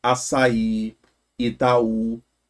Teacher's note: São porque a tônica, a mais forte, tá na última, elas são oxítonas.